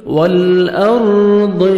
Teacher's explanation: ہے۔ غیب السماوات والارض، لام کو ہم نے ہلانا نہیں ہے، را ساکن سے پہلے زبر ہے، را کو آپ نے پر کرنا ہے، ضاد کو موٹا کر کے پڑھیں گے